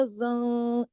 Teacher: हाँ को गले से और ज़ा को मोटा पढ़ना है